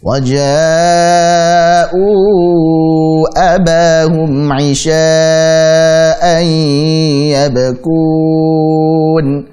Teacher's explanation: Tetapi setelah ada abahum, ada hamzah setelahnya, dan ini karena dalam 2 kata berarti apa? Mad jaiz munfasil, maka kita pun membaca 4 atau 5 harakat